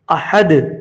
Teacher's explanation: رکیں گے تو دال ساکن ہو گیا، وقف اسکان ہو گیا یہاں پہ، احد۔